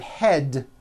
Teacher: the word head ends with a voiced D